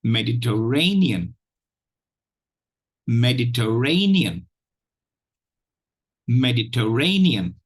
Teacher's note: the 4th syllable is stressed, has primary stress, carries primary stress